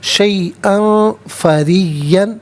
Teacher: ناک میں آواز لے جا کر گنگنانا اسے اخفا کہتے ہیں